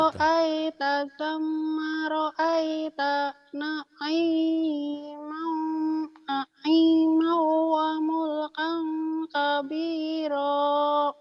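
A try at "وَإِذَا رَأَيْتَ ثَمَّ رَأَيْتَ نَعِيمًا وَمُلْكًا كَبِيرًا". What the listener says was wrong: Itu sekarang kenapa jadi hidung semua ya itu? Hurufnya hidung semua itu. Wa idza ra'aita thamma ra'aita. Nggak ada yang salah, cuma kurang enak aja kayaknya didengarnya. Jangan ke hidung semua ya.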